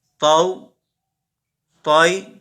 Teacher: طا حروف مستعلیہ میں سے ہے، حروف مستعلیہ کو ہم پر پڑھیں گے